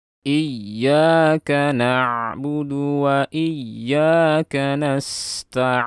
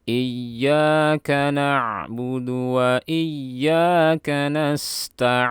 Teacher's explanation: Jadi suara kita tahan. Kemudian di akhir ada mad arid bis sukun. Kita baca panjang sepanjang 6 harokat.